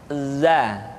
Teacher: Diucapkan dengan cara ujung lidah kita berada di antara dua gigi seri bagian atas dan bagian bawah. Za. Menyerupai dengan pengucapan huruf Z di dalam huruf Latin. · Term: huruf za